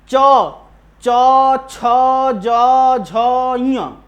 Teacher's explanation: आप जब ये बोल रहे हैं पांचों वर्ण तो वायु आपके तालु से टच हो रही है। च छ ज तालु से निकल रहा है ना।